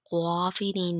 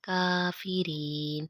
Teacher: یا ایہا الذین آمنوا ان تطیعوا فریقا من الذین اوتوا الکتاب یردوکم بعد ایمانکم کافرین۔ اب یہاں پہ کاف ڈنڈے والی ہے اس لیے اسے باریک پڑھیں گے، قافرین نہیں پڑھیں گے، کافرین